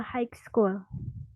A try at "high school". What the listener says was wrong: G-nya nggak dibaca ya.